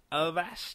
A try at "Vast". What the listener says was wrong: No. There's no A at the beginning. Vast. V-A-S-T.